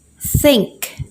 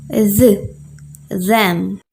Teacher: use the tip of our tongue and our upper teeth again don't create a stop just push the air out and create friction